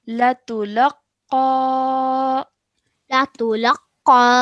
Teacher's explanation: we have to stretch the sound out of qa at the end for about 2 seconds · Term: alif mud